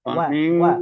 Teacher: شر النفاثات في العقد ومن شر حاسد إذا حسد জি জি, মাশাআল্লাহ, আপনি একটু খেয়াল করতে হবে, ওয়া অ না, ওয়া ওয়া ঠোঁট গোল করে, ওয়া ومن ওয়া।